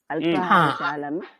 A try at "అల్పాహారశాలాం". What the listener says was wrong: శాలాం శాలా లాకి దీర్ఘ ఉంటుంది